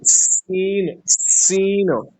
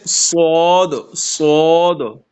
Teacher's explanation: ایک جگہ سے ادا ہوتے ہیں، اور ساتھ ساتھ دونوں جو ہے اس میں سیٹی کی آواز بھی آ جاتی ہے